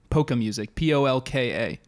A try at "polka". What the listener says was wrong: Do you not pronounce the L? Have you seen the 1990 Chris Columbus film Home Alone, in which John Candy says polka, polka, polka? He says